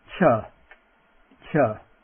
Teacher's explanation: the voiceless aspirate. Remember, a little puff of air. Ch. Ch. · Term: voiced aspirate